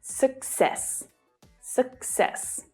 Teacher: the second syllable is the stressed syllable in this word, and that's why you hear it pronounced more strongly, while the first syllable is short and lower in pitch.